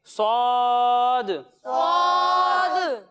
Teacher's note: जब हम स्वाद की अदायगी करेंगे तो इसमें भी सीटी की आवाज़ आएगी लेकिन इसे हम मोटा कर कर पढ़ेंगे क्योंकि ये हुरूफ मुस्तालिया में से है।